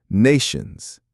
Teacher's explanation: The T in nations is a hard T because it starts the stressed syllable.